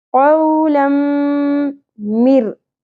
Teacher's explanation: दो जबर तनवीन के बाद मीम मुशद्दद, इदगाम मअल गुन्ना